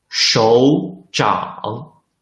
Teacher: there are two third tones. The first third tone should be changed into the second tone.